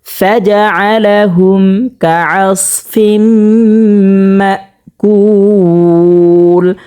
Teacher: 3 আলিফ পরিমাণ টানিয়ে পড়তে হবে। মদের হরফের বামের হরফে ওয়াকফ হয়েছে, 3 আলিফ পরিমাণ টানিয়ে পড়তে হবে। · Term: মদ আরজি